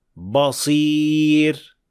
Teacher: ba'ni o'zidan keyingi yo'g'on harf ta'sirida yo'g'on talaffuz qilish